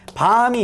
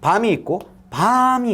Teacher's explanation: 길이가 짧은 밤, 그 다음에 길이가 긴 밤이 있다라는 거죠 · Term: 소리의 길이